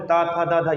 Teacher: और दंत जो दात से हो तो कौन से त थ द ध ये सारे दंत आ जाते हैं